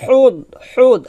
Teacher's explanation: হাটা চিকন করে বলতে হবে গলার মাঝখান থেকে চাপ দিয়ে